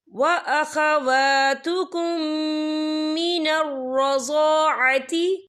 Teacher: या देखें व अखवातुकुम, यहाँ मीम साकिन है, मीम साकिन के बाद जो है मीम मुशद्दद वाला हरूफ आ रहा है, تو یہاں پر ادغام شفی ہوگا، ہم پچھلے میم کو اگلے میم میں مدغم کریں گے اور ہم یہاں غن بھی کریں گے.